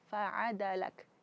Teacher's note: Jadi durasi setiap huruf yang diucapkan faadalak itu harus sama karena dia tidak ada mad di situ.